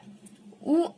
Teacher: ಓಷ್ಟ್ಯ ಅಂದರೆ ತುಟಿಯ ಸಹಾಯದಿಂದ ಉತ್ಪತ್ತಿಯಾಗುವ ವರ್ಣ